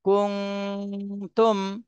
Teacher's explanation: নুন সাকিনের পরে ইকফার হরফ তা এসেছে, এজন্য এই নুন সাকিনে ইকফা গুন্না করতে হবে।